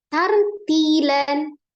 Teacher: Ro sukun dibaca tebal karena sebelumnya adalah fathah